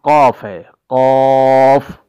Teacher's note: سب سے پہلا حرف قاف ہے، قاف۔ ہم اس کو موٹا کر کے ادا کریں گے